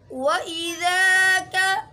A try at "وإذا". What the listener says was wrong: झटका नहीं देना, वإذा नहीं पढ़ना है,